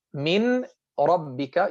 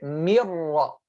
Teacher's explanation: The noon is gone completely with its ghunnah. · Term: Idgham without ghunnah